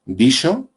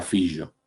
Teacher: otra pareja, prepalatal, fricativa, sorda, sonora